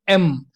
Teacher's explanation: एम में दोनों lips आपके टच हो रहे हैं, तो इसलिए एम जो है वो आपकी बाइलेबियल साउंड है